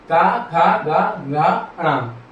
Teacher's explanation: यह कंठ के पिछले हिस्से से बोले जाते हैं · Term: कंठ वर्ग